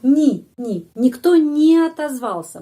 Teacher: dalam bahasa Rusia tidak ni selalu tidak mendapat penekanan